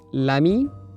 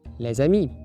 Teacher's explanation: O segundo, se ocorrer liaison, ou seja, se a próxima palavra começar com uma vogal, dá para diferenciar porque vai ter um z no final, não é? Mas a princípio, isoladas, elas são iguais.